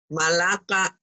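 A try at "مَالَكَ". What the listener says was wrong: Panjang, Bu, kalau ikap ini. ada alif.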